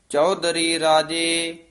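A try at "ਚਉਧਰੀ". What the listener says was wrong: ਚੌਧਰੀ ਦੱਦਾ ਨਹੀਂ, ਚੌਧਰੀ।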